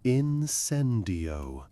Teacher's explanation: with accent on the second syllable